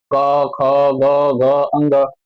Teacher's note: क वर्ग का उच्चारण कंठ से करते हैं · जैसे आप क ख ग घ अंग बोल रहे है तो कंठ से आवाज आ रही है